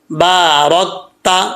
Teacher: next درود پڑھتے ہیں، اللہم، پہلے آپ کو کیونکہ تلفظ کے ساتھ پڑھا چکا ہوں، اب اس کو ہم ایسے پڑھ لیتے ہیں، ٹھیک ہے، اللہم بارک علی محمد وعلی آل محمد کما بارکت، را کے اوپر زبر ہے، اس کو پر پڑھا جائے گا یعنی موٹا پڑھا جائے گا